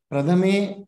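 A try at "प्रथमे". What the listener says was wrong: Prathame. See, there is a tendency for you to say tha as dha. Be cautious and try to change that.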